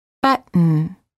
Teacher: Hold the T as in but, and then add an N without releasing the tongue from the gum ridge. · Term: Held T